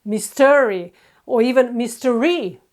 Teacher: They've put the stress on the second syllable instead of the first one.